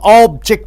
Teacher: in a noun the first syllable is stressed the most but in a verb the last syllable is stress the most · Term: noun and verb stress